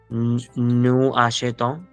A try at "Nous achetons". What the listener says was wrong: do the liaison. Nous achetons, liaison. Okay, because here we have a vowel, which is a vowel.